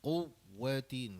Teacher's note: Kalau boleh bagi tekanan sikit pada huruf waw sabdu tu. Quwwatin gitu.